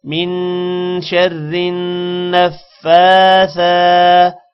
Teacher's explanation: کھڑی زبر کو ایک الف کے برابر لمبا کریں گے اور نون پر شد ہو غنہ کرتے ہیں